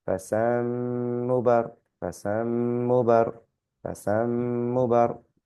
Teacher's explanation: the slight nasal sound with the meem on there, with the mushadda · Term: Ghunna